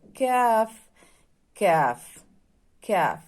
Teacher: اس کی آواز آپ کے حلق اور جو یوولا ہے وہاں سے ٹچ ہو کے نہیں آنی چاہیے، یہ نرمی سے ادا ہوگا